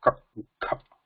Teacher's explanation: Whereas ka kha, there is no nada. There is like a breath. So breath, just a muted breath is there. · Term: ghosha